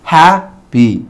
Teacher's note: Vean que la sílaba donde está situada la Y tiene menos fuerza de voz.